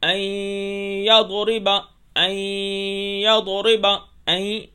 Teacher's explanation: ان یضرب غنہ کے ساتھ ادغام کریں گے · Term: غنہ ادغام